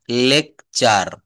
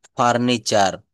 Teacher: এইযে দেখেন টার এটাকে কিন্তু আমাদের ট বলতে হতো কিন্তু না এই যে বলছে শব্দের শেষে টি থাকলে আবার টি এর পরে যদি ইউ থাকে তো এই ই এর উচ্চারণ বা টি এর উচ্চারণ চ এর মত হয়